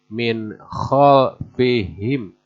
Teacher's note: Nun mati menghadapi kho, maka dibacanya harus idhar, harus jelas